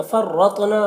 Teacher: फर्रतना, रॉ को पुर पढ़ेंगे, तो को भी पुर पढ़ेंगे और तो में कलकला करेंगे।